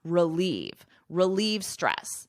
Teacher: The emphasis is on the second syllable and it's pronounced like the word leave. · So I just add a quick ruh. It's unstressed.